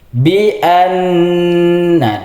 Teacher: Karena nun berharakat tasydid maka dibaca gunah. Cara membacanya harus ditahan dua harakat. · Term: bacaan gunah